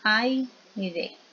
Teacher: Que vamos a tener dos vocales juntas y se pronuncian de una sola vez. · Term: diptongo